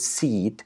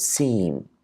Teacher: when we have a vowel before any nasal in English the vowel kind of becomes nasalized and that's because of the effect of the nasal sound after · the EE vowel is an oral vowel